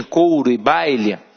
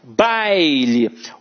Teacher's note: Aqui em baile, baile, o A é a vogal e o I é a semivogal.